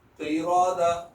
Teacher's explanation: را کو بھی موٹا پڑھیں کیونکہ اس کو اوپر زبر ہے